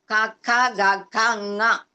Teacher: ఇంకా అదే నాసిక, అనునాసిక. నాసికని కూడా దానికి జత చేస్తే ంగా అంటాము